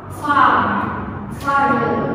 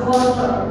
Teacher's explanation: dalam aksen British R akhir tidak diucapkan